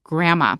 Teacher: We don't usually say grandmother, we say grandma. And then the D kind of disappears